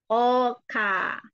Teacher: Kedua huruf ini keluar dari pangkal lidah.